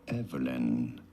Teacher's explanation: you do want to stress on the first syllable Evelyn.